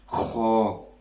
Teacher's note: اور اس کے بعد آتا ہے خا، جیسے آپ ایسے کرتے ہیں تو اسی طریقے سے اس کو ادا کرنا ہے۔ خا پر ادھر وائبریشن ہونی چاہیے آپ کی، حلق کے اوپر والے حصے سے کو ادا کرنا ہے،